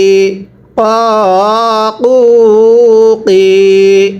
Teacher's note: কফটা উচ্চারণের সময় গলায় একটু ধাক্কা হবে।